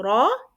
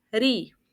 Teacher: When Ra has Fatha, we read it Ra as a heavy letter, but when it has Kasra, we read it as Ri, as a light letter